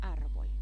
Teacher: la R final se transforma en L